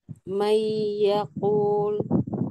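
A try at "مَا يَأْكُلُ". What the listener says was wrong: Masih kurang panjang. Jadi harus konsisten panjangnya. 2 sampai 3 ya.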